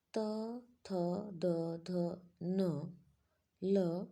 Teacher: यह सारी ध्वनियां दंते से बोली जाती हैं